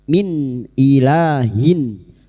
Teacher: Nun sukun atau tanwin yang bertemu dengan 6 huruf ini termasuk hamzah, maka bunyi nun sukun dibaca jelas tanpa mendengung. Min ilahin, la alif kecil di atas, dua harakat kita panjangkan. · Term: idhar halki